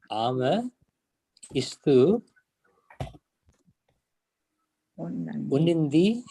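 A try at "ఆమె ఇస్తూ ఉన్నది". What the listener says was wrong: Unnadi. So, not long vowel and only short vowel. Unnadi. So one thing you need to remember, for all the subjects we have long vowel sound here, but for the subject ame we don't use long vowel sound. It is only unnadi. But here this is unnaru, unnadu, unnavu.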